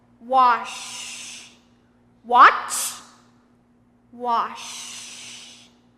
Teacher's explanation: When I make the sh sound in wash, it's longer and not as forceful.